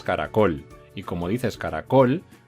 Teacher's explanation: col es la sílaba tónica porque le estás dando la mayor fuerza